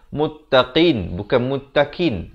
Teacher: Makhrajnya di pangkal lidah. Di belakang sekali bahagian lidah itu. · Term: huruf qaf